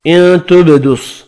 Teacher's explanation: نون کا اخفا ہوگا، با ساکن پر قلقلہ کرنا ہے